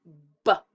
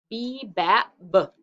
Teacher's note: It's like the stick is the lips. And when we make the B sound, B, we put our lips together. So lips first, drum first.